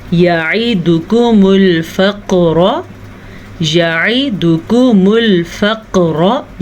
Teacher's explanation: क़ाफ को पुर पढ़ना है और क़ाफ पे कलकला भी हो रहा है। याद रखें, क़ाफ त्वा बा जीम दाल क़ुतुबुज्जद्दिन, इनको आपस में मिलाएं तो बनता है क़ुतुबुज्जद्दिन।